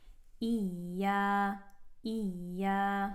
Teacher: Hamza with the kasra going into the ya with the shadda. You want to kind of bite that sound without closing it off too much.